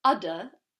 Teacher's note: Just the knowledge that you're going towards an N has a backwards effect on the previous vowel and nasalizes it naturally. So when we say udder, there's no nasalization.